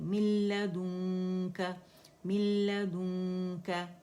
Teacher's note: दाल को मोटा नहीं करेंगे, मिल्लदुनका मिल्लदुनका, क्या के लिए, एक हरकत के लिए हमारा जबड़ा खुलेगा, ठीक है।